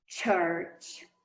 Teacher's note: Então, ele é africado no seu modo e no seu ponto ele é post-alveolar, pós-alveolar.